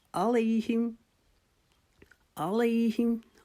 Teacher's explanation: अलैहि को भी हमने एक अलिफ के जितना लंबा करना है